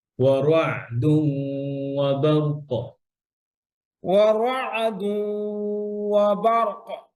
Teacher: তানবীনের পরে ওয়াও আসছে, ইদগাম উইথ গুন্না, ইদগাম করেন গুন্না করেন